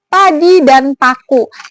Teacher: dia bunyi tak bersuara. Artinya pita suara ini tidak bergetar